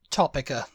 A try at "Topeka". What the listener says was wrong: For it to be Topica, it would have to be CK. We're talking about Topeka, Kansas. Topeka. Topeka. It would have to be CK for that to be Eka.